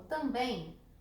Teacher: Cuidado, amores, porque quando eu pego palavras como também, a sílaba forte de também é a última. Então, ela é oxítona.